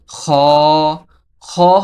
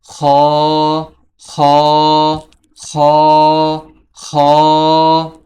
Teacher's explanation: খ হরফটি কন্ঠনালী শেষ হইতে উচ্চারিত হয়। এই খরফটি উচ্চারণের সময় মুখের এরকম অবস্থা হয়।